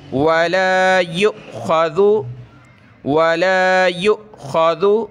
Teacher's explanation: حمزہ کے اوپر یہ جزم آ جائے تو وہ حمزہ ساکنہ یعنی جھٹکے کے ساتھ ہم پڑھیں گے. یا حمزہ پیش یو، اس کو آپ نے یؤخذ نہیں پڑھنا.